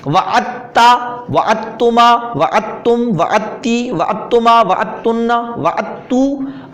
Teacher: دال کو پڑھا نہیں جائے گا بلکہ تا کو 2 بار پڑھا جائے گا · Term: ادغام